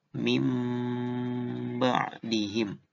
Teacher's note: Jadi bukan min lagi tapi mim dan juga ditahan. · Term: iklab